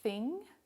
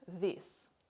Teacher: There are two sounds in English written as TH, as in thing and this. These are voiceless and voiced dental fricatives respectively.